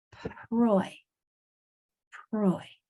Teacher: Make sure it's not pa Roy. The sound for P is not pa, it's only air.